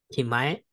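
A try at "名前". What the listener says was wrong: Good guess. It's actually na. Namae, which is name.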